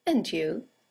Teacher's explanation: In the second example, it's nice to see you again and you and you is a statement. It has a falling intonation and it's used to return the compliment or the greeting.